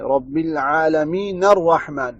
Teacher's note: نون کو فتحہ دے کر پھر آگے پڑھیں گے